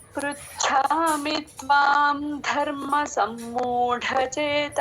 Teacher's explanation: సమ్మూఢ ఢ కి లాస్ట్ లో మహాప్రాణం · చ కింద మహాప్రాణం ఛి